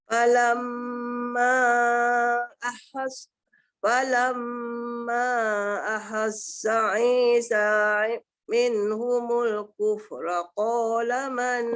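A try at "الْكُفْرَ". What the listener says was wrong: Jaga kufra ko jadi ra lah nipis sikit kan.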